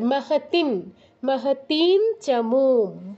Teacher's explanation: তো ওই নয়ের মতো অংশটা থাকবে আর অটা বাদ চলে যাবে, মানে নয়ের কাছাকাছি, দন্তন্যর কাছাকাছি একটা উচ্চারণ হবে, নাসিকার প্রয়োগ করতে হবে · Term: অনুস্বারের উচ্চারণ